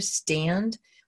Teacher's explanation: We have de-aspiration in here, stand. We lose that push of air and then almost feels like a D, its voiced partner.